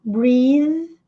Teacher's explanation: TH com som de Z com a ponta da língua presa entre os dentes